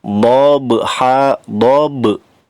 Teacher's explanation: ba-nya berharokat sukun, termasuk qalqalah. Qalqalahnya qalqalah sugro karena ada di tengah-tengah kata.